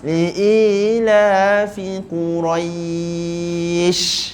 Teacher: Ini cara kita nak panjangkan mat lin. Jadi Qurai dah cukup panjang baru masukkan huruf shin.